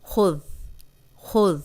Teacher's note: سیٹی کے بغیر ہے، اوپر سامنے والے جو 2 دانت ہیں ان کے کنارے پہ زبان رکھ کے ادا کریں گے